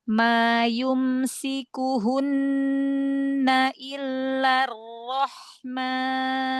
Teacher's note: pada sin tampakkan lagi karena sofir itu suara yang tajam jadi harus jelas suaranya.